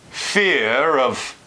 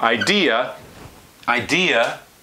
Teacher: There you might get an R that comes in, in this act of trying to link between vowels